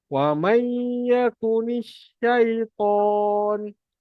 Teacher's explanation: Nun bertemu ya masuk dengung.